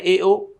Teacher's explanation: जहाँ आधा खुलता है वो अर्धसमृत है, ए ओ। जहाँ मुख पूरा खुल जाता है वो आ विवृत है, और जहाँ मुख 3/4 खुल जाता है वो अर्ध विवृत है।